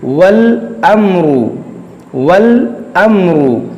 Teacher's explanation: मिम साकिन के बाद एक रा है। मीम साकिन के बाद न तो बा है और न ही मीम, इसलिए इज़हार-ए-शफ़वी लागू किया जाएगा, और हम यहाँ गुन्नाह नहीं करेंगे। · یہاں پر دیکھیں میم ساکن کے بعد را ہے، میم ساکن کے بعد نہ با ہے نہ میم ہے، تو یہاں پر اظہار شفوی ہوگا، یہاں غنہ نہیں کریں گے.